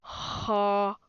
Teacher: you put the base of your tongue just to the back of your throat